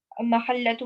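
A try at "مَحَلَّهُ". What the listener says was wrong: محلہ ہو ہے, اس کو آپ محلہ تو کیوں پڑھ رہی؟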